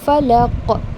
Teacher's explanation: qaf comes with a bouncing sound